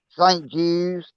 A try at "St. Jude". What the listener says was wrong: because you're making it sound like you said Judes